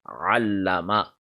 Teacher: Mim zabar ma, allama. Make sure that ayn comes from the center of the throat and it is deep. It is not shallow.